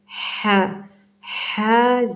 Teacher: ہا باریک اور ٹھنڈی، بھاری نہیں کرنا